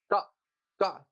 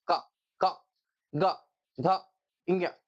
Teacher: का वर्ग को बोलते हैं कंठ से